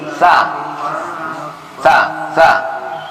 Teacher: Sa itu di ujung gigi. Sa, ujung gigi. Lidah gitu kita letakkan di ujung gigi.